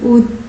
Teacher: उ ध्वनि का उच्चारण स्थान ओष्ठ है